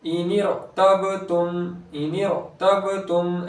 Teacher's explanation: बा हुर्फ़े क़लक़ला में से है तो बा की आवाज़ लौटते हुई आएगी